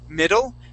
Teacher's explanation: think of those D's not like Spanish D's, but like Spanish R's. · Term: English D